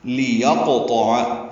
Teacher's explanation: پڑھنا ہے، لمبا نہیں کرنا، یا کو قوف سے ملانا ہے، قوف ساکن ہے، اس پہ قلقلہ ہوگا، قوف کو موٹا پڑھیں گے، پر کریں گے، حروف مستعلیہ میں سے ہے، تو پر ہے، یہ بھی حروف